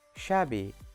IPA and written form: ʃæbi (shabby)